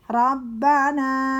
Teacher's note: baknya bertasydid ditekan, na 2 harokat karena ada alif